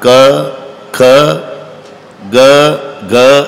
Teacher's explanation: पूर्ण लाईन कंठातून उगम पावते